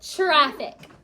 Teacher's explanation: Sometimes that tr sounds like ch